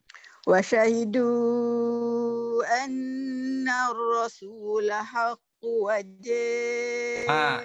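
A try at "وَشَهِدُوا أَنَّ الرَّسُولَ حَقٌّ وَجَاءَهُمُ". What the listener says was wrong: Itu bukan bila gunnah. Itu bukan bila gunnah. Itu kita jadikan qaf tu satu baris. Anna ar-rasul haqqu wa tekan pada waw. Kalau tak ada tekan pada waw, dia akan jadi qaf tu baris satu ajalah. Haqqu wa.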